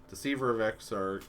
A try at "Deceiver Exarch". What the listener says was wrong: Just Deceiver Exarch. Yeah, there's no of in there.